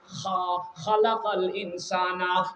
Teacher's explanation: খা উচ্চারণ করার সময় ওই যে আলা জিবা রয়েছে, যেখানে কাশ হলে খুশখুশ করে চুলকায়, ওই জায়গা থেকে উচ্চারিত হয় খা।